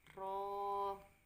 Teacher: Kemudian ada huruf ro fathah diikuti alif tanpa harokat, maka dibaca panjang 2 ketukan atau 2 harokat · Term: mat tobi'i